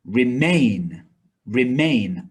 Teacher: that has stress on the second syllable